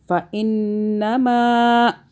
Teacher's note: نون مشدد آ گیا، اس پہ ہم نے غنہ کیا، ٹھیک ہے. میم اور نون مشدد پہ غنہ ہوتا ہے، یاد رکھیں.